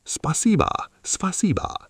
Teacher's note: Note the O at the end sounds like A because it is unstressed, so we say spasiba.